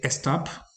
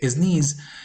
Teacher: Learners insert an extra sound at the beginning a schwa sound and sometimes a Spanish X sound so instead of saying stop